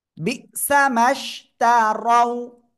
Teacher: আর রর উপরে জবর মোটা আওয়াজে পড়তে হবে।